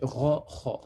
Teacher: C'est pas au niveau de la langue, c'est pas au fond de la langue, mais au-dessus, au niveau de la gorge, en fait, là où elle va se terminer, presque.